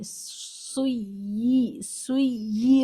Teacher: اس لیے اوپر اس کو 2 یا لکھ کر بتایا گیا کہ یہ 2 یا ہے، اس کو سختی کے ساتھ پڑھیں، اور دونوں یا سنائی دینی چاہیے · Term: تشدید